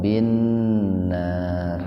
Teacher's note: Ila mad badal adza mad tabi alif bin nar alif lam samsiah gunnah atau idgham samsiah plus gunnah. Jadi diidghamkan sambil mendengung